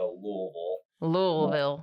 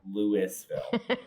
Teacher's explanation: most locals put it more back in their throat as if they have some bourbon in their mouth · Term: More in the throat